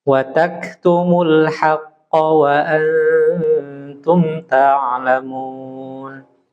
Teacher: jadi huruf qaf jangan keluar udara.